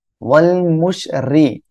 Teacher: র নিচে জের রয়েছে চিকুন করে পড়বেন